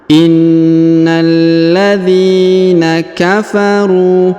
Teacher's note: huruf na ditahan dan ditekan karena terdapat tanda tasdid